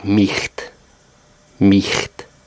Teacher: in the end or middle of a word, it's a guttural ch sound, like the Scottish loch.